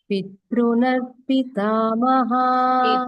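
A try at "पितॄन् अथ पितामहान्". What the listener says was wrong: Pitru. Ru is dirgha.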